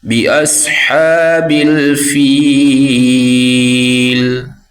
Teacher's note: صاد کو پر پڑھیں گے، موٹا پڑھیں گے